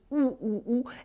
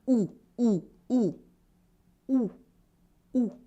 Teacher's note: When you pronounce OU, your lips are rounded, your mouth is almost completely closed, OU, and your tongue is in the back, OU.